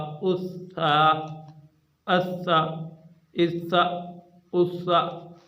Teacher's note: یہ تھا باریک، اور اس کو بالکل ہم نے درمیانی آواز میں پڑھنا تھا، سٹی کی آواز نہیں نکالنی تھی۔